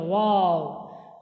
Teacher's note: আর তা দাল ত জীবের আগা সামনের উপর দুই দাঁতের গোড়ার সাথে লাগিয়ে উচ্চারিত হয় তা দাল ত। আচ্ছা ওয়াও দুই ঠোঁট না মিলে উচ্চারিত হয় ওয়াও।